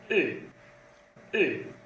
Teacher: é como se fosse pronunciar um U, mas dizer I ao mesmo tempo, né? Então a língua vai lá para trás, né?